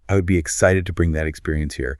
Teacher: your vocal pitch naturally drops at the end of the word here. It signals absolute finality. It tells the room, "I have concluded my thought.